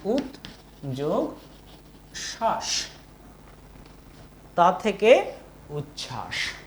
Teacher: উত এখানে খণ্ডত আর এখানে তালব্য স দেখো আছে, তাহলে এই যে তালব্য স আর খণ্ডত দুটো একসঙ্গে হয়ে চ এবং ছ, চ এবং ছ কিন্তু পাশাপাশি ধ্বনি এবং উভয়ের মধ্যে উচ্চারণের অনেকটাই মিল আছে। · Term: অন্যান্য সমীভবন